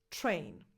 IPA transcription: tʃr